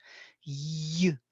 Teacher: It's a consonant built on E basis. E pressed to the extent that it becomes consonant. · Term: semi-vowel of E